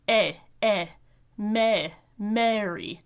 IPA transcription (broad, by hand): eɪ eɪ meɪ meɪri